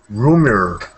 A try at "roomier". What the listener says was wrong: Good. Roomier. Nice.